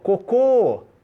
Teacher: a última sílaba tônica isso é oxítona